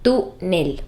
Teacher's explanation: La palabra ámbar es también una palabra grave y tiene el acento en la sílaba am, ámbar. La palabra túnel lo es también y tiene el acento en la sílaba tú, túnel. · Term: palabras graves